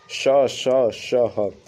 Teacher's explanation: जिन व्यंजनों के उच्चारण में एक प्रकार की गर्माहट या सुरसुरा हट से प्रतीत होती है उसे उष्म या संघर्षी व्यंजन कहलाते हैं जैसे श ह म